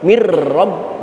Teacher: Masuk semuanya, sempurna masuk semuanya. Maka yang terdengar cuman tasdid ro, tidak terdengar sisa suara nun. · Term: idgham tam